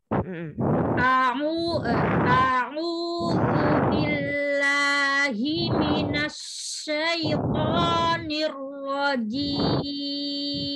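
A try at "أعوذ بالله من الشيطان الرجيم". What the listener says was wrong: Iya. Ash. Itu masih as gitu. Coba di tengah. Jangan as. Tapi agak dikumpulin lagi. Pokoknya kelemahannya ada di tafasyiknya masih.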